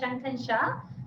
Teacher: షా అనేది తాళవ్యం, అంటే ఇక్కడి నుంచి వస్తోంది షా. ఓకే, చా వచ్చే ప్లేస్ నుంచి వచ్చే షా మెలిక షా అని తెలుగులో అంటాం